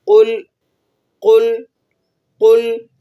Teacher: دوبارہ سے سن لیجئے، قوف آپ نے پر پڑھنا ہے، یعنی منہ بھر کر اس کو ادا کرنا ہے، جس کو عام فہم لفظ میں کہا جاتا ہے کہ آپ نے اس کو موٹا پڑھنا ہے۔ قوف کو آپ نے موٹا پڑھنا ہے اور لام کو ہلانا نہیں ہے